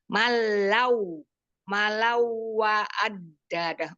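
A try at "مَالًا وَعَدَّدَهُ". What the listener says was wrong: Ini bacanya maknya panjang dulu, jangan ditasdid lah. Malau, jangan. Malau, ya perhatikan. Yang ditasdid. Yang tidak bertasdid, jangan ditasdidkan ya. Malau, wa'addadah.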